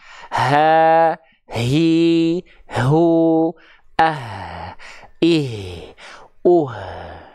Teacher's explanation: punya sifat namanya hams mengalir nafasnya maka pastikan ketika teman-teman melafalkan H besar Ha nafasnya harus jelas